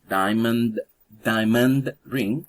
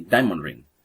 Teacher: When you say diamond ring. So the sound at the end of the first word disappears, and that in English happens a lot. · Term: elision